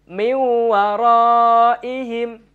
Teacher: nun sukun bertemu dengan huruf wawu dibaca samar dan juga melebur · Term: Idgham Bighunnah